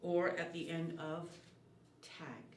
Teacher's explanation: This sound for g is made at the back of the mouth.